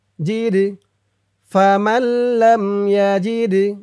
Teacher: এই দালটা কলকলার হরফ ধাক্কা দিয়ে পড়তে হবে